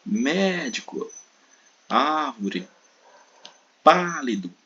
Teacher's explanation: As proparoxítonas é a antepenúltima, é a sílaba tônica. A antepenúltima é a sílaba mais forte.